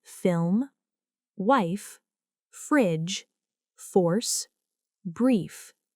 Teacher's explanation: The letter F is pronounced f, as in film, wife, fridge, force, brief. This is a voiceless sound. The upper teeth touch the lower lip. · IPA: /f/